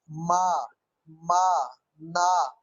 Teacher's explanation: आप जब माँ बोलते हैं या ना बोलते हैं तो नाक वाइब्रेट करता है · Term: नेजल साउंड